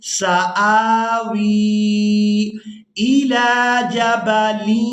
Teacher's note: قَالَ سَآوِي، واو کو یا مدہ کے ساتھ ملاتے ہوئے کھینچ کر ادا کریں گے